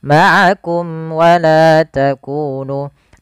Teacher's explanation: mim mati bertemu dengan waw, yaitu izhar syafawi, yang dimana harus dibaca dengan jelas suara mimnya